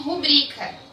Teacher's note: A sílaba tônica ali é o bri, não é o ru. Então eu não posso falar rúbrica.